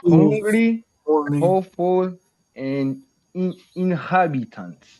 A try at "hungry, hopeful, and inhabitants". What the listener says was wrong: That's better. That's better.